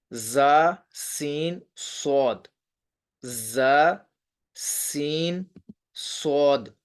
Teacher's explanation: صفیریہ کا مطلب ہوتا ہے سیٹی والے، کہ قرآن کریم میں ایسے حروف جن کو سیٹی کے ساتھ پڑھا جاتا ہے. حروف صفیریہ یعنی سیٹی والے حروف، ان کی تعداد 3 ہے.